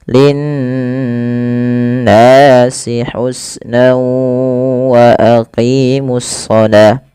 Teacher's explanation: Lafal nun berharakat tasydid itu wajib ditahan suara n ya. Nah, ini yang kita namakan dengan gunnah.